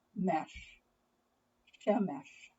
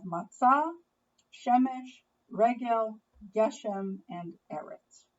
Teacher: each one is made up of two syllables the first syllable is a consonant vowel syllable the second is a consonant vowel consonant syllable